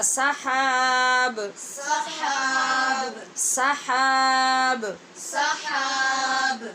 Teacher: سحاب با پہ قلقلہ ہوگا.